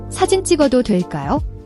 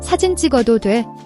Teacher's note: The double consonant, jji, is a tense jj sound, like the ch in church but without the aspiration, no breathy sound.